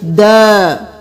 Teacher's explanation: الف مدہ ہے اس کو 1 الف کے برابر کھینچیں گے